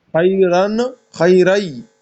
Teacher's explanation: خیرن میں نون یا میں تبدیل ہو گیا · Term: ادغام